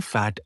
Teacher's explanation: Two, labiodental. Formed by touching the lower lip to the upper front teeth.